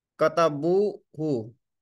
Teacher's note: Bu is a long vowel, so hu will be short.